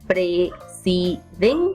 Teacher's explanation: Presidente es una palabra sin tilde, presidente. Y la mayor fuerza de voz recae en la penúltima sílaba y eso nos hace notar que estamos trabajando con palabras graves.